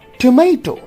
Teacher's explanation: So in tomato also the weak vowel, that is shwa, disappears, or it has zero realization.